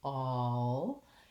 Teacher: And so thinking about that rounded shape, all, and having kind of a W to glide between the ah, and the L might help you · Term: dark final L